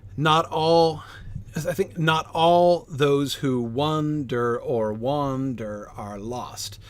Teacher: the primary movement of the song is anapestic. Unstressed, unstressed, stress. Dun dun dun dun dun dun.